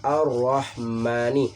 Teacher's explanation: ro di sini adalah hukumnya tafhim, itu dibaca tebal, tidak dibaca tipis ya. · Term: ro tafhim